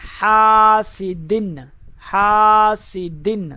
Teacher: ہا کو لمبا کریں گے کیونکہ ساتھ میں الف مدہ ہے۔